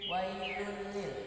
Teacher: idgham bila gunnah, memasukkan tanpa harus berdengung